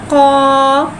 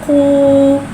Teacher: कौफ को एक अलिफ़नी 3 हरकत के बराबर खींच के पढ़ेंगे। कौफ हुर्फ़ मुस्तआलिया है, लिहाज़ा इसकी आवाज़ हलक से मोटी अदा होएगी। कौफ के नीचे खड़ी ज़ेर है, खड़ी ज़ेर को एक अलिफ़नी 2 हरकत के बराबर खींच के पढ़ेंगे और खड़ी ज़ेर को नीचे गिराते हुए अदा करके पढ़ेंगे।